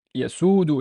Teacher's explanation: the scene here has no haraka, but there's a wow. So yasudu. It's a long vowel oo sound